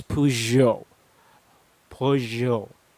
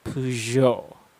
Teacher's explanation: Although the word is spelled with a G, because of the preceding vowel sound or the vowel letter, and the proceeding or the letter after that, it changes its pronunciation. Instead of sounding it like a G sound, you sound it with a J sound with a bit of a Z included in it.